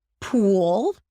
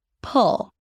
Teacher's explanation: Pool tense and long. Pull relaxed. Open.